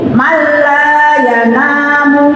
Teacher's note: Man itu kalau sendirian, tapi ketika bertemu lam tidak man tapi mal, jadi mala. Tidak usah dibingungkan, tidak usah mala, tidak ditahan, tapi langsung, ya. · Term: idgham bila guna